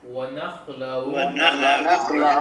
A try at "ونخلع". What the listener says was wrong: نخلع میں کیا ہے؟ عین ہے آخر میں، ٹھیک ہے، اس کو واضح کریں گے.